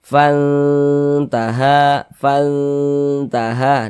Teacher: di bagian fannya kita tahan kita panjangkan sejenak karena dia digunahkan. Ha ha dibaca panjang. · Karena makharijul huruf nun dengan huruf ta itu dia dekat maka dikatakan aqraba. Cara membacanya bunyi nun sukunnya disamarkan kemudian didengkan. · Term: ikhfa hakiki